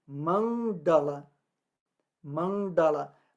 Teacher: o d é retroflexo com a língua enrolada para trás